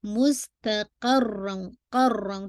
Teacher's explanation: را پہ آواز تھوڑی سی ایلیویٹ ہوگی تاکہ سننے میں آپ کو لگے کہ ہاں آپ را کو ٹوائس پڑھ رہی ہیں نا